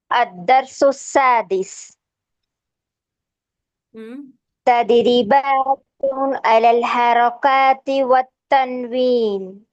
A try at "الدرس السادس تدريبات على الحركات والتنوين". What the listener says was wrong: Make the ra heavy.